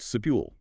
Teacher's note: the B was dropped entirely in speech